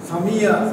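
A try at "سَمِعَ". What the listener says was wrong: সামিআ, হ্যাঁ আইনের মধ্যে একটু প্রেসার দিতে হবে, সামিআ, হ্যাঁ জি,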